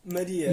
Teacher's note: Com A fechado, já que não está na sílaba tônica.